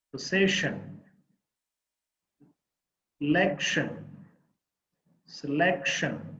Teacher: there are three syllables the second syllable the middle syllable is the stressed syllable